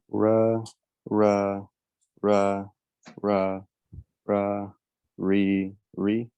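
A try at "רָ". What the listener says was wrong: Okay, this is an ah. You are pronouncing the ah as if it was like a schwa, like a Okay, it's not it's ah. Okay, that's the difference. Ra.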